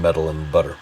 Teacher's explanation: the flap that you hear in metal and butter